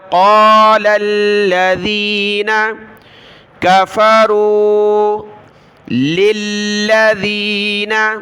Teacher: لام کو لام کے ساتھ ملا ہے ، قَالَ الَّذِينَ كَفَرُوا لِلَّذِينَ، لام کو دوسری لام کے ساتھ،